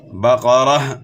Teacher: قاف اور را کو آپ نے موٹا پڑھنا ہے، بقرہ نہیں پڑھنا، بقرہ۔